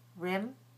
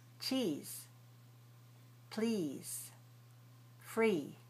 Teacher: So when I'm saying e, I have a lot of tension here. So e is a tense high front vowel, which means that you need to pull the muscles in your cheeks and your tongue goes out a little bit this way also.